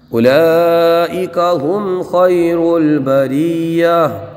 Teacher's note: یہاں پر مد متصل ہوگا اس لیے کہ الف مدہ کے بعد حمزہ اسی کلمے میں ہے۔ یہاں میم ساکن میں اظہار شفوی ہوگا، گنہ نہیں کریں گے